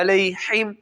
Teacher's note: غیر المغضوب علیہم، اس میں بھی اکثر غلطی کی جاتی ہے، علیہم پڑھ دیا جاتا ہے اس کو، یعنی حمزہ کے ساتھ پڑھ دیا جاتا ہے ہم، کچھ اس کو ہا کے ساتھ پڑھ دیتے ہیں علیہم، یعنی سینے والی ہا کی بجائے گلے والی ہا جو ہے جو وسط حلق سے نکلتی ہے اس ہا سے ادا کر دیتے ہیں۔ جو کہ لحن جلی کی غلطی کے اندر شامل ہوتی ہے.